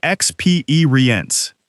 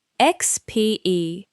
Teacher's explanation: The stress is on the second part. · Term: word stress